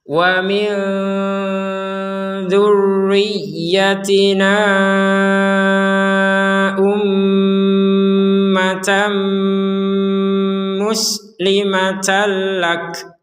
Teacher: Kalau digabungkan maka menjadi panjangnya 4 sampai 5 harokat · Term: harokat bendera